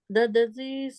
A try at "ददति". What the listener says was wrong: T, not C. Dadati.